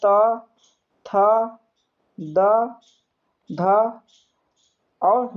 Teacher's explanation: दंत से आता है बाबू दंत में देखिए दंत आता है त थ द ध और न आता है।